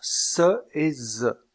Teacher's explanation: il y a un resserrement du passage de l'air au niveau des alvéoles avec la pointe de la langue en bas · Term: constrictives alvéolaires